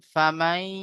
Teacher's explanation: দেখেন নুন সাকিনের পরে ইয়া এসেছে ইদগামে, ইউমিনের 4টি অক্ষরের মধ্যে ইয়া আছে, তাই নুন সাকিনের আওয়াজকে ইয়া এর সাথে মিলিয়ে এক আলিফ পরিমাণ গুণনা করে পড়তে হবে